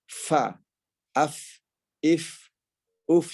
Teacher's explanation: Ujung gigi seri atas ini bertemu dengan bibir bawah bagian dalam. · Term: huruf fa